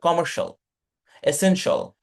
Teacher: লাস্টে যেগুলো এই যে টেবল আছে, তারপরে ধরেন কমার্শিয়াল, এসেনশিয়াল, যে শিয়াল আছে, শিয়াল গুলা সব শল হয়ে যাবে